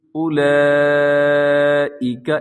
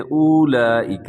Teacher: سب سے پہلے دیکھیے گا لفظ ہے اولئک، اس کے اوپر بڑی مد ہے، اس کو مد واجب بھی کہا جاتا ہے، مد متصل بھی کہا جاتا ہے۔ اور اس میں جو واو لکھا ہوا ہے وہ واو آپ نے نہیں پڑھنا، یعنی اس کو اپنے لمبا نہیں کرنا، بلکہ اولئک ایسے پڑھنا ہے۔